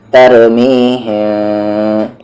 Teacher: ایک پیپر کے برابر، لیکن آواز کو آپ کو ناک میں رکھنی ہے تھوڑی دیر، غنہ کرنا ہے